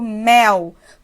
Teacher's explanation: Então esse L está representando o som de u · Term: semivogal